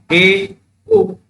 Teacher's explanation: जब हम ए उ का उच्चारण करते हैं तो हमारा मुख जो है आधा बंद हो जाता है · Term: अर्धसंवृत